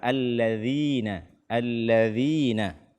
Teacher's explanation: tidak membaca huruf dzal dengan makhraj yang benar, atau menggantinya dengan zai. Allazi, allazi, ya.